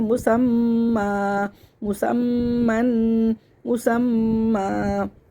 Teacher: مسمن غنہ کریں گے، میم مشدد پہ بھی ہم نے غنہ کیا اور تنوین پہ بھی ہم نے غنہ کیا